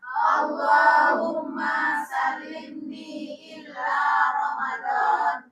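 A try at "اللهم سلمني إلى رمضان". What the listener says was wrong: Bukan illa ya, ila. Nah, nggak ditasdik dong. Jangan, kalau illa artinya kecuali, salah arti nanti. Illa itu ke. Bahaya kalau illa. Allahumma sallimni ila Ramadan. Dengerin saya detail. Allahumma sallimni ila Ramadan. Artinya, ya Allah hantarkan aku ke bulan Ramadan, oke? Tapi kalau pakai illa, tasdik, Allahumma sallimni illa Ramadan.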